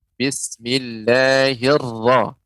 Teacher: ra tebal itu tidak banyak getarannya